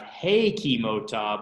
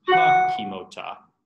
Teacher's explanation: So it becomes ha kimota, and that sere reduces to a vocal schwa